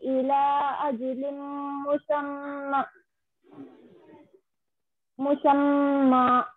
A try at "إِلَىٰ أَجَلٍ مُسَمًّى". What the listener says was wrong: इला को थोड़ा और खींचना ना, कौन सा मत है वो, इला मध्य और इला अजलिम मुसम्मा उन्ना भी करना, मीम पे तस्दीद है ना.